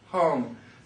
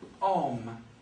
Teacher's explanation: French speakers tend to drop the H